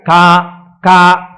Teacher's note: కే అన్న దాంట్లో కా కా పలకాలంటే ఎక్కడ పలకాలి? కంఠం దగ్గర పలకాలి. కా కా అంటే ఇక్కడ పలకాలి.